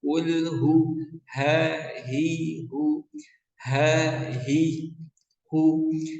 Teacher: Ini menggunakan h yang besar ya. Tenggorokan paling bawah ya, mendekati dada. Suaranya ngebas.